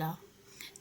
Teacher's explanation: जैसे कि र पार्श्व व्यंजन जब जीभ स्वास वायु के मार्ग में खड़ी हो जाती है और बगल से निकलती है मतलब ल जब ल बोलते हैं तो वायु बगल से निकल जाती है